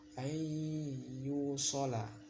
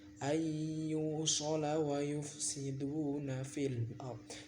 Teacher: nun cukup bertemu ya jadinya dengung idgham bi gunnah